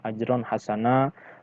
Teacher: Ajron hasana, terakhir di paling akhir penutup ayat ini ada mad iwad ya, di sini ada fathah tain atau tanwin yang kemudian harus dibaca waqaf karena posisinya letaknya di akhir ayat, sehingga dibaca mad, baca panjang 2 harokat.